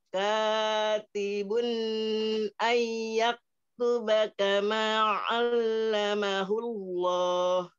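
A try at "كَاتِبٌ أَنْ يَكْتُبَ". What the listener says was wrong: Ya, bunyi jangan terlalu lama, Bun. Katibun terlalu lama. Cepet aja. Katibun, bun, gitu.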